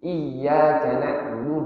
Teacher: Iyyaka na'budu, di iya itu kan ada tasydidnya. Di iya itu ada tasydidnya, maka di situ harus kita tasydidkan, harus kita tekan sedikit untuk menandakan di situ ada dua huruf ya. Karena pada hakikatnya yang namanya tasydid itu dia ada dua huruf di sana.